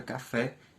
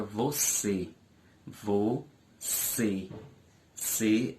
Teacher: é uma palavra oxítona porque a sua sílaba mais forte a sua sílaba tônica é a última